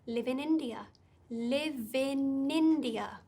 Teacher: we don't want to say those as three separate words we want to link them live in india live in india so it's almost like india · So it's almost like India starts with n, Nindia, live in India.